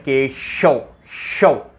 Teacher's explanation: जिह्वा का मध्य भाग कहाँ स्पर्श करता है, तालु के स्पर्श करता है। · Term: तालव्य शय